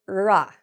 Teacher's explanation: for the retroflex, you want your tongue to move up, but you don't want to touch the bump at the roof of your mouth, okay? So, like I said before, do not touch the top of your mouth when you make an R sound.